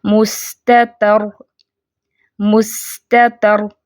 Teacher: را کو ادا کرتے وقت نوکے زبان میں ہلکی سی کپکپاہٹ پیدا ہونی چاہیے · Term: تکرار